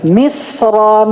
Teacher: Kalau misra ditanwin itu wajib dibaca tebal.